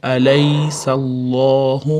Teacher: Alloh lafzi fathadan keyin kelgan uchun o'rtasidagi lam tashdidli lam oga o'qiladi. Ya'ni yug'on o'qiladi.